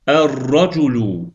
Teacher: ra hərfi şəmsiyə hərfdir. Buna görə də ləm tələffüz olunmadı.